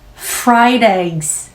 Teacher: 두 알 이상 먹는다면 eggs, 성대 울림으로 유지해 주셔야 됩니다.